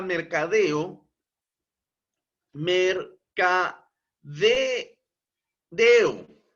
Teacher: el mayor impulso de voz se encuentra precisamente en la última sílaba, deo. Publicidad. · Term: acento prosódico